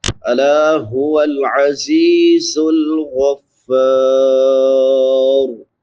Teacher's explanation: زا سیٹی والے حروف میں سے ہے، 3 حروف جو سیٹی کے ساتھ ادا ہوتے ہیں